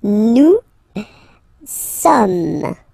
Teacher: So you don't pronounce the final S here, it doesn't exist.